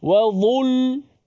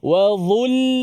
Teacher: Biar dha sahaja yang tebal. Bila lam kita nipiskan. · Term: lam nipis